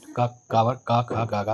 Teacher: उच्चारण कंठ से होता है।